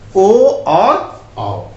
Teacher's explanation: कंठोष्ठ से दो वर्ण का उच्चारण होता है, ओ और औ